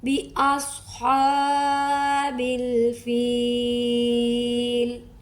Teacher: स्वाद को पुर पढ़ेंगे, हा को हलक से निकालेंगे और बा की बे को लंबा नहीं करेंगे